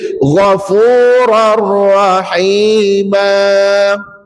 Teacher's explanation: tanwin tu baris dua di atas masukkan ke dalam huruf ra yang bersabdu dan dibaca tanpa dengung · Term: idgham bila gunnah